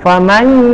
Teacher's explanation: didorong suara kita ke rongga hidung